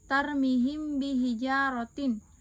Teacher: Cara membacanya adalah dengan membaca mim mati dan huruf-huruf tersebut disamarkan. Tidak ada penekanan dalam yang kuat pada bibir tersebut dan juga membacanya disertai gunnah atau dengung. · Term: ikhfa syafawi